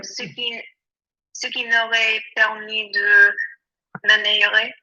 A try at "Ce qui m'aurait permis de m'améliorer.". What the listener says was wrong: Lovely. Yeah.